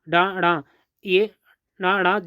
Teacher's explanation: कहते हैं तो डड का उच्चारण करते समय जिहा ऊपर उठकर जीभ ऊपर उठकर झटके के साथ नीचे आती है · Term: उत्क्षिप्त व्यंजन